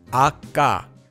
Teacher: So instead of practicing ga, you could add the sound ah before it and practice pronouncing ah-ga. To say it, you'll say ah, then take a quick pause, tensing your mouth, followed by ga, ah-ga. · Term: double consonants